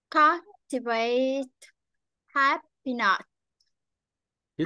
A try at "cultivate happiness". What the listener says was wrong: chữ sờ phía dưới chưa nhả ra